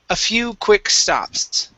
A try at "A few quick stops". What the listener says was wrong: Okay, now add the S at the end of stops. A few quick stops.